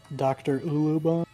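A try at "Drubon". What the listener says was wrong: One of the U's is silent.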